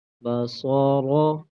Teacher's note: صاد اور را دونوں موٹے حروف ہیں، ان کو پر کر کے پڑھیں گے